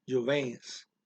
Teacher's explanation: Well, there's an N in there, but I'm not saying jovens, I'm saying jovens. Going through the N as a nasal and right into the S